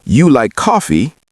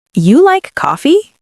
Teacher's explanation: rising tone tells the listener it's a question. Without the rising tone, it might sound like a statement.